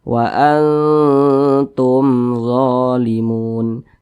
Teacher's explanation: Akan tetapi kalau ada huruf mim sukun di depannya sini bukan huruf ba, di depannya sini bukan huruf mim, maka semua nama hukumnya adalah izhar syafawi. Karena dia izhar syafawi maka tidak didengungkan. Dibaca jelas.